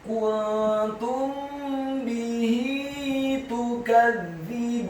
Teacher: Kata tukadzibun, huruf ta-nya dibaca tipis dhammah satu harokat, huruf kafnya dibaca tipis fathah satu harokat, huruf za-nya dibaca tipis tarqiq, lidahnya agak keluar sedikit ditasydidkan kasrah satu harokat, huruf ba-nya dibaca tipis dhammah dua harokat karena setelahnya ada wawu sukun, dan di akhir ayat huruf nunnya dibaca sukun.